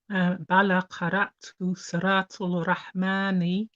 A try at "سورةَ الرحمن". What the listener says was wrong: Surata. Okay, did you pronounce the lam there? Because you know the ra is a sun letter, isn't it?